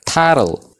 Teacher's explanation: Vowel letters kanneen jenne kana keessaa tokko gidduu yoo taate T san akkamittiin dubbisna jenne T gara D tti finnee dubbisna jechuudha. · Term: The flap T